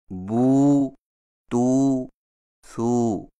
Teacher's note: उल्टी पेश को पढ़ते वक्त आवाज़ को एक अलिफ से कम या ज़्यादा लंबा न किया जाए। अहले इल्म ने कहा है कि खुली हुई उंगली को मुतवस्सित तरीक़ा से बंद या बंद को खोलने में जितनी देर लगती है ये एक अलिफ की मिकदार है।